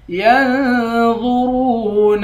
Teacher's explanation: ينظرون، یا کے بعد نون ہے، نون پر اخفا کریں گے، وا اور را دونوں کو موٹا پڑھیں گے۔ ینظرون، را کے بعد واو ہے، واو حروف مدہ ہے، اس کو ایک الف کے مقدار کھینچ کر پڑھیں گے۔